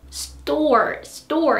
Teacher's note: tense consonants are like T in store. Store, store. You can't really feel air from it, right?